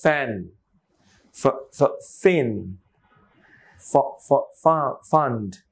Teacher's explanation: উপরের দাঁত নিচের ঠোঁটের সাথে চেপে ধরেন